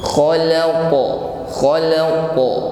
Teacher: bunyi pantulan huruf qaf ini harus tebal, karena huruf qaf adalah huruf isti'da, yaitu terangkatnya lidah bagian belakang. · Man khalaqa ditutup dengan huruf qaf, ya. Maka qafnya bersukun, maka kita tampakkan bunyi goncangan atau qalqalah.